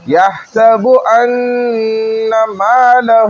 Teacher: ان پہ غنہ ہے صرف کھینچنا نہیں ہے